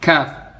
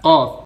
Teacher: Kaf atasnya sedikit dari qaf.